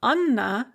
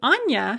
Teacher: the name Anna has a hard N because it has an A written after the N. But the diminutive Anya has a soft N because we have a ya written after the N.